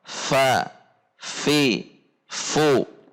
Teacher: Yang pertama adalah al-mahmus, yang berarti ketika membunyikan huruf fa saat berharokat disertai dengan mendorong udara. Seperti contoh, fa, fi, fu.